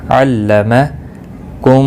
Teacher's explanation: میم ساکن کے بعد دوسرا میمہ ہے، ادغام شفوی ہوگا، گنہ کے ساتھ پڑھیں گے